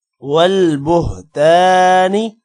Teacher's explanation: تا کے بعد الف لمع کریں گے، نی کو لمع نہیں کرنا